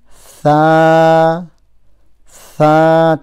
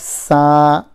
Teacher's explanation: Tip of the tongue touching the edge of the front two teeth, upper front two teeth. So Tha, not like Sa, but Tha.